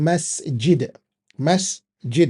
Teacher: Now, the London way, you notice that majority of us in the UK, we say masjid. We literally change this S sound, the S sound, to sh sound with the J, and then we say masjid, and that's not correct.